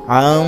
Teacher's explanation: Ang ikhfa ya, nun sukun menghadapi huruf shad dibaca dengan dengung